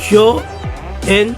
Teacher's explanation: la palabra yo, que aunque es monosílaba, termina en vocal, y la siguiente palabra en también empieza con vocal, y entonces se hace una sola sílaba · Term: sinalefa